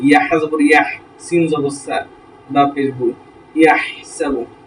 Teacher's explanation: হা যেখান থেকে উচ্চারিত হয় সেখান থেকে, হলকের একদম মাঝখান থেকে